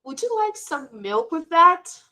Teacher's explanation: when using would like to offer something our voices rise i'm sorry our voice rises at the end example would you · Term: rising tone